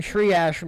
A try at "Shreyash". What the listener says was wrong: Shreyash. You said tree ash.